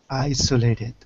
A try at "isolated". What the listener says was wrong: Isolated, not E, but I. Isolated.